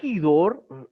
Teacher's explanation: En este caso tiene acento hidor, que es agua, donde viene luego, pasando por el castellano, por latín a castellano, que tenga la H representando esa aspiración del espíritu rudo